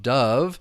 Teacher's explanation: So dove with that schwa sound, that uh sound.